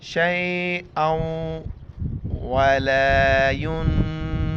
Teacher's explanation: نون ساکن ہے، ناک میں آواز چھپائیں گے